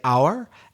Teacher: Because it's a silent H, it begins with a vowel sound.